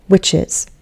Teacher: We're only going to stress one of those syllables. We're not going to stress the ending. We're going to stress the word, the main root here.